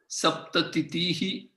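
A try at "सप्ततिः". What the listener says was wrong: It is not Saptatitihi, it's Saptatihi and Ashitihi. It's not Ashititihi. There is no two thirds there. Saptatihi.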